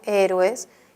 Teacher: En héroes podemos ver dos vocales abiertas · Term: hiato simple